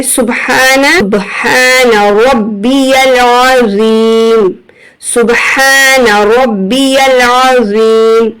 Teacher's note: دیکھیں یہاں حمزہ نہیں پڑھا جائے گا، یہاں پر یا کو لام سے ملائیں گے اور را کو با سے ملاتے ہوئے سختی اور جماؤ لائیں گے کیونکہ با کے اوپر تشدید ہے